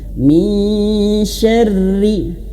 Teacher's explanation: Ditahan min ya samar-samar antara nun dan syin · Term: ikhfa